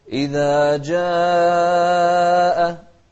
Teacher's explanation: لاحظوا المقدار واحد، 4 حركات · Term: المد المتصل